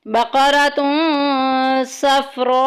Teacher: الف مدہ کے بعد حمزہ اسی کلمے میں آ گیا ہے، مد متصل ہو رہا ہے، 2 ڈھائی الف کے برابر لمبا کریں گے